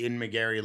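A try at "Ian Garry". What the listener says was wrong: You're saying his name wrong too now. You said McGarry. You said Ian McGarry. You said Ian McGarry as well.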